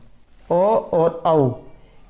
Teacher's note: ओ और औ का उच्चारण स्थान कंठ और ओष्ठ है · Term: कंठोष्ठम